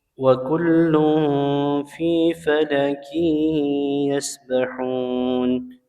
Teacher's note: Ya, tanwin bertemu ya, idgham bi gunnah. Ya, tanwinnya melebur ke huruf ya disertai dengan gunnah.